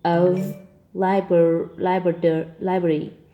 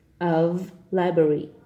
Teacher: we pronounce the word of with a voice v